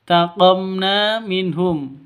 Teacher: Di sini ada mim mati bertemu dengan nun. Cara bacanya jelas terang. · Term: izhar syafawi